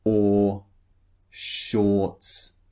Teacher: The R in shorts is not pronounced